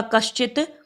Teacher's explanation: तालव्य शकार, जीभ तालू पे लगती है